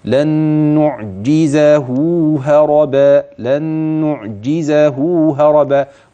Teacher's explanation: اوصل نون لن بنون نعجزه هيبقى في عندي هنا ادغام نخلي بالي بقى من الغنه بتاعته لانها في اتم مراحلها · كثير كان بيشبع المد ويدي اكتر من حقه لا ده هو حركتين اثنين بس